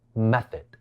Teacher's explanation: 呢個字第2個音節係非重音